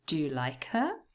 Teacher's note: so do and like are naturally stressed if it is a question